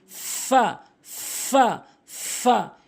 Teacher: উপরের দাঁতগুলো নিচের ঠোটের পেট। উপরের দাঁতগুলো নিচের ঠোটের পেট।